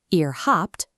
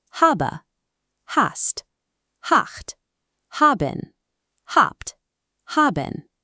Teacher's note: ihr habt, pronounced with a hard P